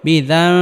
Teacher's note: করে পড়তে হবে রব্বু হুম বাজার বি দাল মিম জবর দাম নুন সাকিনের পরে ইকলাবের হরফ বা আসার কারণে এখানে ইকলাব গুন্নাহ করে পড়তে হবে অর্থাৎ নুন সাকিনকে মিম দ্বারা পরিবর্তন করে পড়বে